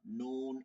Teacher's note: জিহ্বার আগা তার বরাবর তালুর সঙ্গে লাগায় এই যে জিহ্বার আগাটা তালুতে গেলে কি হবে উচ্চারণ নুন ইজি · ওই 4 নম্বরের সাথে মিলাই দেখেন, জিহ্বার গোড়া বলছিলাম তার বরাবর তালুর সঙ্গে লাগে, আর এইটা হবে জিহ্বার আগা তার বরাবর তালুর সঙ্গে লাগে